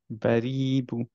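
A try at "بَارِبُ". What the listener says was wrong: বুতে টান হয়ে যাচ্ছে ভাই, বারিবু,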